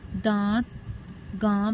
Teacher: वायु कहाँ से निकल रही है, मुख से ज्यादा निकल रही है ना, नाक से कम है। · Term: चंद्र बिंदु